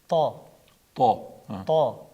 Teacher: To fathali bo'lib kelganda to deb yo'g'on o'qiladi. To tovushining tilning uchi ustki old tishlar tubiga tegishi va tilning tanglayiga ko'tarilishi bilan talaffuz etiladi. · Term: to harfi